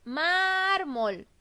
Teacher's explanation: la sílaba tónica o la que tiene más fuerza de voz es la sílaba mar. Entonces la palabra es grave porque la sílaba tónica se encuentra en la penúltima sílaba, la que viene antes de la última.